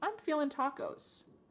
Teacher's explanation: I'm feeling, cutting off that G